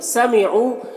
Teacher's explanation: واو مدہ ہے، اسے بھی ایک الف کے برابر کھینچیں گے۔